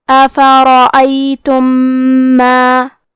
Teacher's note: ادغام کا معنی ہے حرف کو حرف میں داخل کرنا، تو ہم میم ساکن کو دوسرے میم میں ملا کے ایک ہی میم غنہ اور تشدید کے ساتھ یہ حکم کو ادا کریں گے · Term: ادغام متماثلین صغیر